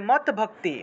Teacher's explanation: এটাকে যদি আলাদা ভাঙ্গি তাহলে হসন্ত যুক্ত একটা দ চলে আসে এই হসন্ত যুক্ত দ টা তৎ হিসেবে উচ্চারণ হবে